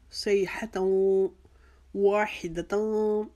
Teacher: صیحتوں کے جو تا کے اوپر 2 زبر کی تنوین ہے اس کو واو کے اندر ملا دیں گے